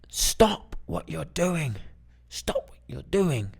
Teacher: it's that more aggressive tone it's the lower tone falling